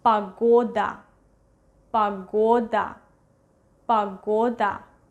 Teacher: Exactly, vowel reduction, that's why we read it as A, погода. We write down O, but we pronounce it as A when O is not stressed.